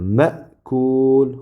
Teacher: Bu hamza. Hamza sukunlik bo'lganida ma'kul, ma deb shunday havo to'xtatiladi. Demak, sukun bilan talaffuz qilinadi.